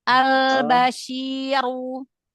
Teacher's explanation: lidahnya. Angkat pangkal lidahnya. Biar tebal runya.